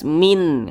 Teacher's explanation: Maka nun sukun berjumpa dengan huruf kha, hukumnya adalah izhar halqi. Karena dia izhar maka dibaca jelas, tidak berdengung.